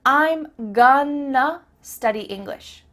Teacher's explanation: I'm gonna study English means I'm going to study English. That word to simply becomes a.